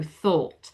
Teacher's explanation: I thought a little bit more rounded on thought.